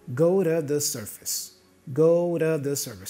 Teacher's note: The T here for let also is pronounced as a stop consonant, let you, won't let you, go to the surface, go to the surface. So two is reduced to a da